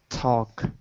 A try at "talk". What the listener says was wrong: I think when you said it fast, it wasn't clear. You have to make the A, talk.